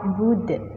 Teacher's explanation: dal itu termasuk huruf qalqalah, maka wajib dipantulkan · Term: qalqalah kubra